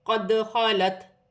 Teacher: دال ساکن ہے، قلقلے والا حرف ہے، قلقلے کے ساتھ ادا کیا جائے گا۔